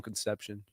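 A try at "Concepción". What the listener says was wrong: but that's a CION, not a TION. Sion. You got to say it with some throat. Sion.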